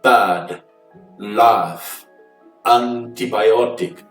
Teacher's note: você basicamente abre a boca para falar um a, mas você vai sair com som de e, a ou é